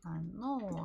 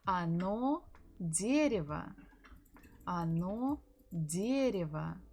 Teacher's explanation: Stress on the second O.